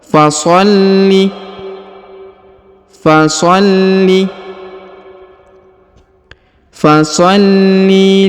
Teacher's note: huruf lam ditahan dan ditekan karena terdapat tanda tasdid atau penekanan yang ini ya yang seperti gerigi di atas foli fasoli fasholi